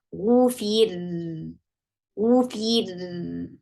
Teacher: The ra with sukoon will get sifa of tawassut, and tawassut is a medium flow of sound. The sound of ra will flow at a medium pace.